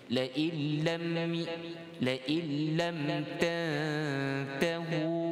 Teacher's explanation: Kalimah la illam, lam dengan baris fathah, nipis.